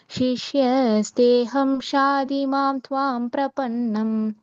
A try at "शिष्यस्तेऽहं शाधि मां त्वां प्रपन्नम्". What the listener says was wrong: சிஷ்யஸ்தேஹம் ஷாதிமாம் துவாம் பிரபன்னம். அங்க அகம் படிக்கணும், சிஷ்யஸ்தேஹம்னு சேர்த்து படிக்க கூடாது. அகம் ஷாதிமாம் துவாம் பிரபன்னம்.